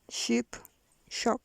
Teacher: Voiceless fortis palato-alveolar fricative.